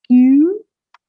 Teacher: From E, the mouth should move towards U